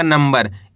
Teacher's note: नम ब और आ मिलके बन जाएगा नंबर। इस शब्द के अंदर अपन ने आधा म का उच्चारण करा है।